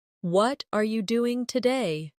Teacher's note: The stress usually falls on what and doing.